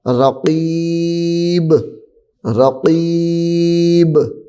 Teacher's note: با حروف قلقلہ میں سے ہے. قلقلہ کی آواز جو ہوتی ہے وہ لوٹ کر دوبارہ نکلتی ہے